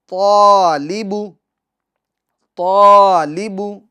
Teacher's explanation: طالب طالب، یہ غلط ہے، طالب طا، یعنی طا کو تو آپ پور کر رہے ہیں مگر الف کو پور نہیں کر رہے ہیں، یہ غلط ہے۔ طا کے ساتھ آپ کو الف بھی پور یعنی موٹا پڑھنا ہوگا۔